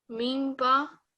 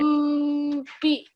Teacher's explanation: both sounds come from the lips being pressed together, don't they?